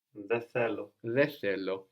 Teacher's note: especially with common expressions like δεν θέλω, δεν θυμάμαι, you're really likely to notice that N missing, which can remind you that you can let these N's go before TH.